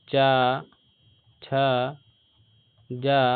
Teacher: अगर तालव्य देखें इसे च झ ञ या ये सभी क्या हैं? तालव्य होते हैं।